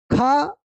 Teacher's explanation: ख ज्यादा हवा निकलती है इससे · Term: महाप्राण